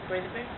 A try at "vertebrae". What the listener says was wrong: Vertebrae. So you see that T at the end? It's silent.